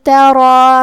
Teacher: کلمت ترا میں حرف الرا کی حرکت ہے زبر لہذا ہمیں را کو موٹی آواز میں پڑھنا ہے